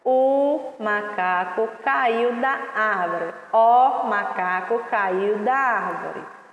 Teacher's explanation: O som do O tem o som do U, viu? A letra O tem o som do U.